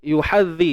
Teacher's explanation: zal ni kita kena keluarkan hujung lidah sikit sahaja.